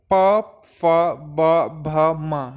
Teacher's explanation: बोलते बोलते समझ में आ गया कि होंठ हमारे टच हो रहे हैं पा बोलने पर, तो ये जो है ओष्ठ व्यंजन है।